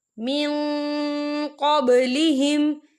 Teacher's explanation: والذین من قبلہم، یا دیکھیں من، یہاں نون ساکن ہے، نون ساکن کے بعد جو ہے قوف آ رہا ہے، اور قوف جو ہے اکفا کا ورڈ ہے، تو ہم یہاں اکفا کریں گے، نون ساکن کی آواز کو ناک میں چھپائیں گے